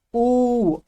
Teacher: जब ऊ का उच्चारण कर रहे हैं आपको ऐसा लग रहा है आपके होठ तो आगे आ रही है लेकिन जीभ पीछे की तरफ जा रही है